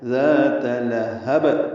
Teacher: وقف کرنے کی صورت میں ہا کو با سے ملانا ہے۔ ذات لہب، ہا کو با سے ملائیں گے، قلقلہ ہو جائے گا